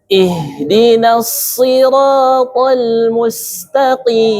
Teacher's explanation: ujung lidah tapi bertemu dengan gigi bawah namun pangkalnya naik. Nah, makanya sehingga suaranya shadnya menjadi tebal.